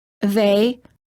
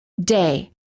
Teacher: Some non-native speakers incorrectly pronounce the voiced TH as a D.